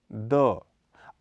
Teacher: अल्प प्राण घोष ध्वनि है। इसका उच्चारण स्थल दांत है।